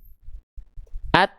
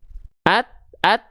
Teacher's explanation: Perhatikan ketika kita melafalkan a ketika masuk et itu dia pasti terhenti dulu suaranya. Itu sifat syiddanya ketika ujung lidahnya nempel ke pangkal gigi seri atas. Coba ya. At. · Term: sifat syiddah